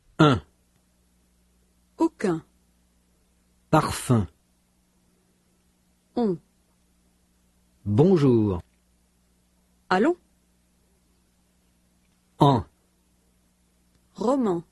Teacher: not to pronounce the consonant sound N